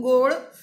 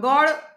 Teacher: ભાષા વિજ્ઞાનની પરિભાષામાં એને સંવૃત્ત કહેવાય, સાંકડું. જ્યારે ગોળ એ ખાવાનો ગોળ, એનો ઉચ્ચાર પહોળો છે, વિવૃત કહેવાય એને. · એ ગોળમાંનો જે ઓ છે એ સાંકડો, સંવૃત્ત છે. ભાષા વિજ્ઞાનની પરિભાષામાં એને સંવૃત્ત કહેવાય, સાંકડું.